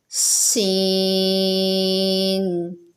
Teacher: سین بھی سیٹی والا حرف ہے اور یہ 3 حرفی بھی ہے، اس کو تھوڑا کھینچ کر پڑھیں گے